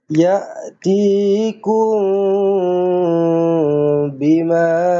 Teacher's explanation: Panjangkan ma ni ada ombak. Maka ma dibaca dengan panjang empat ataupun lima harakat. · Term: Mad wajib muttasil